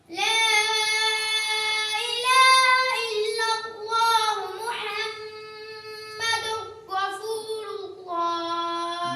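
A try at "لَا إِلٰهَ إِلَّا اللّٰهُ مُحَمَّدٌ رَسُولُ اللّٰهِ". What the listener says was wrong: مد پوری کرنی ہے بیٹا، وہ مد تم نے پوری نہیں کی۔ لا الہ الا اللہ محمد رسول اللہ۔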